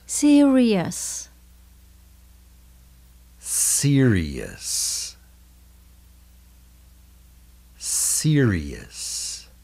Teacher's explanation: Serious là trầm trọng hoặc là nghiêm trọng. Mình nhấn âm đầu tiên